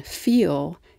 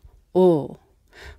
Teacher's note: But at the end of a syllable, like in feel, it's a dark L, ol.